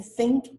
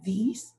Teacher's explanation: you're still using the same position of your tongue between your teeth but in one of them you're not using your vocal cords and in the second one you are